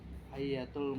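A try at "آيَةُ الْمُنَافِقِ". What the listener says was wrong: Ayatul, jangan di ayat, ayatul.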